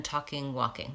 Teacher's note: and walk we don't say the L sound even talking walking that's right the L is silent